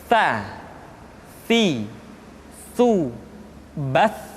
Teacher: lidah disentuhkan dengan dinding dua gigi seri bagian atas. Sa, si, su, bas.